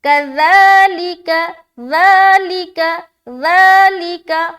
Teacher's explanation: کذالک نرمی والا, زا نہیں بولنا. کذالک یا کجالک ایسا نہیں بولنا.